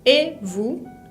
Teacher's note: Uso una entonación ascendente, aguda, ¿no? Et vous, porque es una pregunta. Al final de vous lleva una S que no pronuncio.